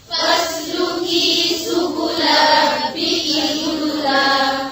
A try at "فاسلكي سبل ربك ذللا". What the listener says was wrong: रब्बी का नहीं है रब्बी की है ध्यान से पढ़ें फिर से फसलुकी